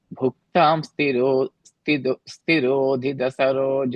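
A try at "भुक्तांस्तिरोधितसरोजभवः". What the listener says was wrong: That one, the is will come with the bhukta. So it will be like bhuktams tirodhita.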